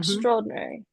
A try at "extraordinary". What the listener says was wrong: Now, you don't want to hit the R before the D. So it's an extraordinary.